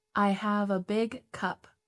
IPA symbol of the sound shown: ʌ